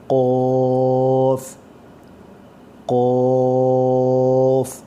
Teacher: قوف کی آواز موٹی اور سخت ہوگی, اس کو آواز کو آپ نے موٹا کر کے پڑھنا ہے گلے سے. قوف زبان کی جڑ اور گلے کی طرف سے.